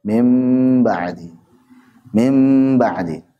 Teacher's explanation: mengikhfakkan mim ke ba mim Gimana diikhfakan ke ba ya karena mim sudah dua bibir nempel ba dua bibir nempel · Ya karena mim sudah 2 bibir nempel, ba 2 bibir nempel, lanjutin aja. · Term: iklab, iqlab